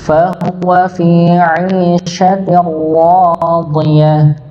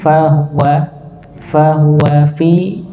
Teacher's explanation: ti-nya tipis, ra-nya yang tebal. Tir, bukan tir tapi tir, ini ditebalkan.